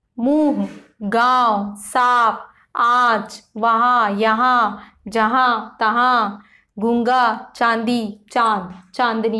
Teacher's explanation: अनुनासिक के उच्चारण में वायु नाक व मुख दोनों से निकलती है